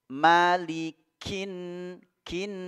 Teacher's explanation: jadi ada sedikit e mengalir udara ketika pengucapan huruf Kaf malikin Kin langsung masuk alif lam syamsiyah pada Nun digunakan juga